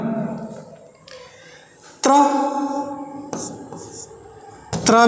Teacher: यह बना है त और र से है ना ये त र से बना है ये बोला जाता है दंत से और रा बोला जाता है मूर्धा से यह दंत ये मूर्धा और दोनों को मिला के हो गया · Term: दंत मूर्धा